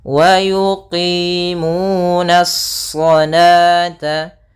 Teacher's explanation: alif lam syamsiyah, yaitu alif yang ditulis tapi tidak dibaca. Langsung kepada huruf shad yang tebal. Hati-hati, nanya tetap tipis, shadnya memang tebal.